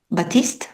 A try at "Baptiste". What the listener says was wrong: Baptiste. La T ne se prononce pas.